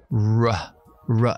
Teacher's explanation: decir la palabra rojo vale saco los labios ra ra y noto como la lengua hacia así hacia atrás pero no toca paladar